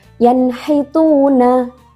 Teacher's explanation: nun sukun bertemu dengan ha dibacanya jelas tanpa dengung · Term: izhar halqi